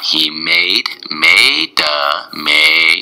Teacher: you hold that A a little.